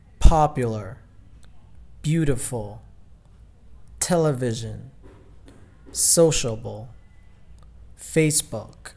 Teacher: Trọng âm ở âm tiết đầu